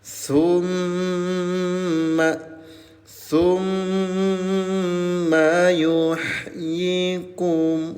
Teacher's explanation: mim tasdid dengungkan dua harakat